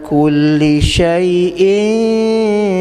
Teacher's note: Syai'in ikhfa'kan tanwin bertemu dengan shin.